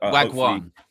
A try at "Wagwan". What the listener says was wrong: Yeah, no, not wag. No, wah. Wah. Not wag. No, wah. Not wag. Wah. Wagwan, not wag.